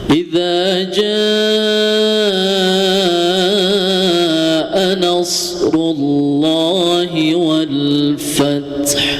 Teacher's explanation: setelah huruf za ada huruf alif, yaitu hukumnya matabi'i ya, dibaca 2 harokat, jangan kurang ya, atau jangan dihilangkan matabi'inya.